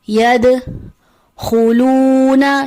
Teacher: دال حرف قلقلہ میں سے ہے، جب بھی ساکن حالت میں ہوگا آواز پلٹ کے واپس آتی ہے